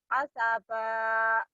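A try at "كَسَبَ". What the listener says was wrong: Bukan A tapi K. K-nya kurang jelas ya. K.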